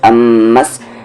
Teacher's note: میم پہ تشدید ہے، غنہ ہوگا